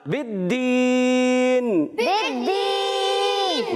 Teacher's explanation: دال مشدد ہے، تھوڑا رک کر ادا کریں گے